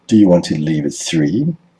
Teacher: the speaker stresses three to show that they want to know whether this particular time is convenient or not